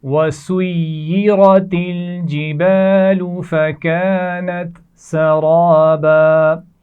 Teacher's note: وَسُيِّرَتِ یا کے اوپر شد ہے، سختی سے پڑھا جائے گا. را کے اوپر زبر ہے تو را کو موٹا پڑھا جائے گا. وَسُيِّرَتِ الْجِبَالُ یہ ملا کر پڑھے جانے والے الفاظ ہیں، اس کا خیال کیجئے.